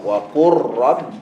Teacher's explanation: dia kata tak sama tapi sangat dekat dia punya makhraj dia maka bila lam mati bertemu dengan ra berbaris terus masukkan pada huruf Ra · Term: Idam, idgham